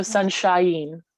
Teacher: So shine is obviously one syllable, but we have the ah and the e that make up an I vowel. So sunshine. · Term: diphthong